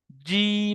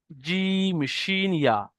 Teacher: জিভের মাঝখান এবং তার বারাবার উপরের তালুর সাথে লাগিয়ে উচ্চারিত হয় জিম শিন ইয়া। জিভের মাঝখান, তার বারাবার উপরের তালু লাগান, জিম, দেখেন জিম যখন আপনি বলছেন, দেখেন জিভটা গিয়ে উপরের তালুর সাথে লাগছে, জিম শিন ইয়া।